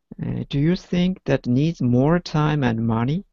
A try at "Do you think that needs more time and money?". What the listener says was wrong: Good job. Absolutely. You got all of those, right?